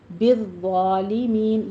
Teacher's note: ضا کو پر پڑھتے ہوئے فتحہ قائمہ دا کیجیے، سختی کے ساتھ پڑھنا ہے